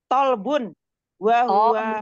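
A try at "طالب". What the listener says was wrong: Tolibun. To'nya panjang. La. Tolibun.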